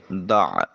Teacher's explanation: عین کو وسط حلق سے نکالیے۔